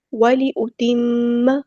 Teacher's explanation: میم پہ غنہ زمانی ہو رہا ہے، ایک الف کے برابر رکیں گے